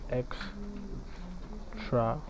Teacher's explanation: for most adjectives, especially adjectives with four syllables like extravagant, you have the stress pattern in the second syllable. So that is depicted here in option B, the stress on the second syllable.